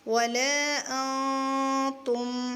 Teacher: نون کی آواز کو ہم چھپائیں گے کیونکہ یہاں اخفا ہوگا جب ہم ملا کے پڑھیں گے۔ ولا، حمزہ نون زبر ان، کیا بنے گا، ولا تا میم پیش تم، ولا انتم، میم کو ہلائیں گے نہیں کیونکہ یہاں میم ساکن ہے، میم ساکن کے بعد عین آ رہی ہے، تو ہم یہاں پر اخفاء شفوی نہیں کریں گے، اظہار کریں گے۔